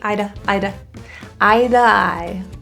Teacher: We've got a T surrounded by vowels. We're going to say that as a D or a flat T